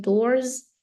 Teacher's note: we need to make it into z sound because it ends with um voiced R